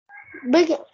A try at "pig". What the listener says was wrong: Đúng rồi, pig. Pig nha, không phải là big nha. Đây là pig nha.